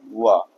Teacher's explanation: यह दंत और ओष्ठ से बोला जाता है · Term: दंतोष्ठ